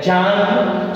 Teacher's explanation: That is the plosive, the brief plosive, that is a little bit of the plosive in a full of what we call the fricative. So the combination of both the plosive in the fricative gave us what we call the affricate.